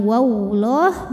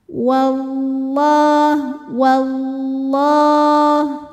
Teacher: dibunyikan secara tafkhim sebab harakat huruf sebelumnya wau barisnya fathah maka lam ini dibunyikan dengan menebalkannya pangkal lidah naik ya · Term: lam jalalah